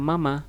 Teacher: Mama juga gampang, tidak ada yang tidak ada yang mirip-mirip, tapi dia posisinya ada di bibir, areanya di bibir. Mama, bibir, antara bibir atas dengan bibir bawah. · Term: huruf mim